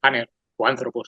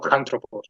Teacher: Bueno, en el griego aner, antropos, hombre, la alfa del principio tiene un espíritu suave, que lo que indica simplemente es que no se aspira